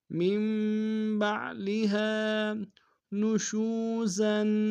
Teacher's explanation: نشو میں او مدہ ایک مقدار میں کھینچیں گے، زا کے اوپر تنوین غنہ کریں گے۔